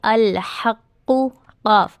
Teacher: क़ाफ मोटा होगा, क़ाफ के ऊपर शद है, इसे हम थोड़ी सी सख्ती के साथ अदा करेंगे